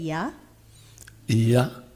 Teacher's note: So once again, say ya. Ya, Ya is palatal. You have your tongue way back in the roof of your mouth.